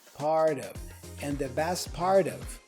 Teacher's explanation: the T for part is joined with the of word, the preposition, as a flap T,